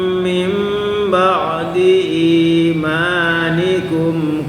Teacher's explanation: Mim ba'di, jadi nunnya berubah menjadi mim.